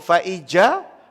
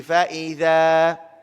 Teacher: sini zal makhraj di mana tuan-puan? Hujung lidah, hujung gigi.